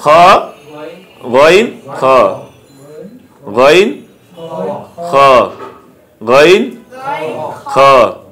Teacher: 3 নম্বর মাখরাজ হলো কি, হলকের শেষ ভাগ হইতে